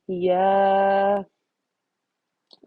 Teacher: الف سے پہلے یا پر فتحہ ہے تو یہ مد اصلی ہوگی 2 کاؤنٹس کے برابر